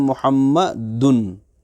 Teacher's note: ہم محسوس کر سکتے ہیں کہ ناک میں نون کی آواز جا رہی ہے